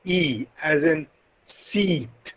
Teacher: E is a front closed unrounded